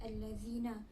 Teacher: Pada perkataan allazina terdapat 2 hukum yang berlaku, iaitu hukum alif lam syamsiah kerana huruf alif lam bertemu dengan huruf lam. Cara bacaannya dibaca idgham, iaitu memasukkan allazina.